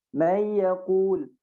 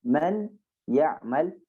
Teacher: Harusnya dia masuk ke huruf ya. Masuk ke huruf ya dan masuk ke hidung. Makanya namanya idgham bi gunnah.